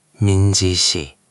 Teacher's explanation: Just make that shi a tiny bit sharper. It almost has a slight hiss to it.